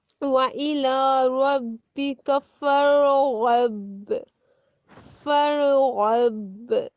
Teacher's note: जब गाइन हरकत में अदा करेंगे तो जुबान की जड़ तालु के साथ लगेगी। जुबान की जड़, जुबान की जो जड़ है ना, आप जुबान अपनी बाहर निकालें, राइट, उसको आपने लास्ट पे जाके हाथ लगाना है।